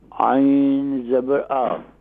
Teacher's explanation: عین کو صحیح طور پر اس کے مخرج سے یعنی میڈل آف تھروٹ سے ادا کریں